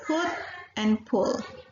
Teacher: it is half open central area and the lips are rounded